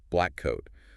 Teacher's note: Your mouth forms the first plosive, the K at the end of black, by raising the back of your tongue to stop the air. But instead of releasing that air, You just hold it. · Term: Delayed plosion